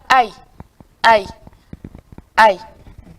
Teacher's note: Donc, ici, on a aïe, aïe, aïe. Dans la prononciation, vous avez tout de même l'impression d'avoir deux sons, A, I, A plus I. Mais dans cette langue-là, ces deux sons-là forment un seul son. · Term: diphtongue